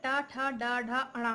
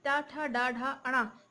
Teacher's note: इन वर्णों के उच्चारण में जीभ मुड़कर तालु के पिछले हिस्से को स्पर्श करती है, यही मूर्धा कहलाता है।